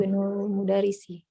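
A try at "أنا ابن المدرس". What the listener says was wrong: Sahih, tapi coba diwasal Coba diwasal. Dilewatkan hamzahnya. Ana Ana benul mudarrisi.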